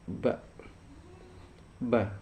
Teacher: kita rasakan itu di leher kalau mbak mbak itu Di mana tempat berbunyinya di bibir depan antara bibir atas dan bawah · Di bibir depan, antara bibir atas dan bawah itu keluar nada ba. Jadi ketika bibir bersentuhan dengan bibir itu keluarnya ba. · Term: huruf ba